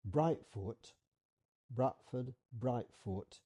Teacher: it's also correctly pronounced with a glottal stop in the middle. Brightfoot, Bradford, Brightfoot, it's almost the same thing.